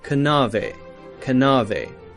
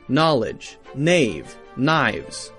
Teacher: now we have a silent k so we don't say kanu we say no knowledge nave knives